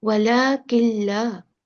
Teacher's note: Because noon is completely merged with lam. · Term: Complete merging